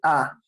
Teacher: Tu boca abierta, tu lengua baja, está en el medio y el sonido produce allí, A, en medio.